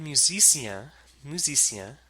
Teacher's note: the N creates a nasal vowel. It's not considered a consonant sound